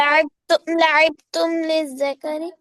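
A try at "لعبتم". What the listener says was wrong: यहाँ पे लिखा हुआ है लिद्दाकरी, लिद्दाकर बोलने की जरूरत नहीं है, लिद्दाकर बिलावज ऐड करनी है। लाइब तुम बस, ठीक है ना।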